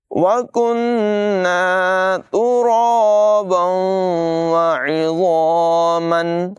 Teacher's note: रा को पुर अदा करेंगे। तनवीन के बाद वाव हरूफ़ यरमालून में से है, मिलाकर पढ़ेंगे, इदगाम और गुन्ना करके पढ़ेंगे।